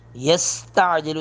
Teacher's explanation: سین پر سٹی کی آواز آئے گی